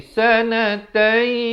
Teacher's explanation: Sebab tanwin bertemu ya, idgham bi gunnah. Masuk beserta dengung 2 harakat.